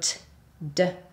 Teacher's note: And so for alveolar consonants, you're using your tongue tip and it comes into contact with your alveolar ridge. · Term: alveolar sounds